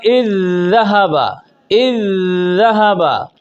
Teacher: यानी दोनों दाल एक साथ मुशद्दद अदा हुई है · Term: इदगाम सग़ीर मिसलैन ताम